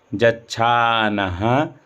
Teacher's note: फिर जच्छानः, ये जा या में जो बीच में कटा रहता है उसको जा बोलते हैं यजुर्वेद में। जच्छानः, ना के बाद जो विसर्ग है ह्रस्व विसर्ग है, यानी ह्रस्व वर्णों का उच्चारण करने में जो समय लगता है वही इसमें लगेगा।